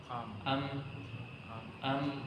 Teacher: kalau mim itu sukun maka dibaca am am am am bukan langsung terhenti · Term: atawasud